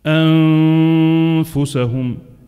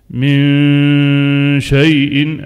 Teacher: الصوت كله من الأنف، ولكن تنتظر عند قريب مخرج الفاء.